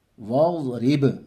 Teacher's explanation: با میں قلقلہ ہوگا، یعنی آواز ٹکر کھا کے الگ ہوگی